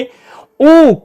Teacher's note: तो आपने कहा पश्च संवृत्त स्वर है